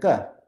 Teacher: So for example, if you're specifying, you want to know what sound comes if you use a guttural sound, if you use the throat and it's hard and unaspirated, you get a ka